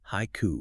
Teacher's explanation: Yeah, and a mora dictates rhythm, and it's often much, much brisker than an English syllable. So, take the English word haiku. That's two syllables, but in Japanese, it's three morae.